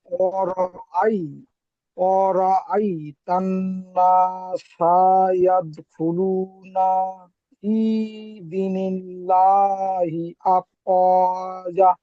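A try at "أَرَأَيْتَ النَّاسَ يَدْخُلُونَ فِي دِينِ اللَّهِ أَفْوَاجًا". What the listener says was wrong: জি এখানে দির টান ছেড়ে গেছে, অয়ের টান ছেড়ে গেছে, জায়ের টান ছেড়ে গেছে।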